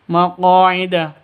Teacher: qo panjang dua ketukan karena ada alif diawali dengan fat fathah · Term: mad asli